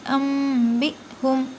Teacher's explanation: حمزہ ساکنہ کے پڑھنے میں جھٹکا ہوتا ہے